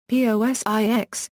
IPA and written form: ˈpɒzɪks (POSIX)